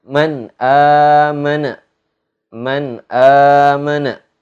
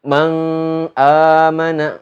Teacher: Man amana, nggak boleh dibaca mang amana, nggak boleh dibaca ada dengungnya, harus bersih, harus terang, gitu, harus jelas. Man amana, gitu, nun mati bertemu dengan hamzah. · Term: idhar